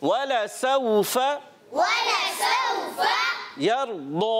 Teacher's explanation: रा साकिन से पहले ज़बर आ गई, रा को मोटा करेंगे, पुर पढ़ेंगे।